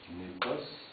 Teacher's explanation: On a un nominatif népos, accentué sur la première syllabe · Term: accent tonique